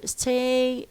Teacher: It can be unaspirated, as we have here. Stay, the sa makes ta lose its aspiration